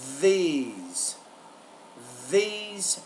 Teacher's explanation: the ENT Dental voice consonant and what that means is is the tongue is between the teeth when I produce a sound but also there's there's vibration in the vocal folds when I produce his sound so that's called The interdental Voice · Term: interdental Voice consonant